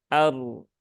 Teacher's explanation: Kemudian eh, ardu, di sini ada ro, nah, roknya sukun ya, roknya sukun, roknya sukun yang sebelumnya ada hamzah yang harokatnya fathah, maka roknya di rok sukunnya dibaca dengan tebal, aru ya. Bukan ar.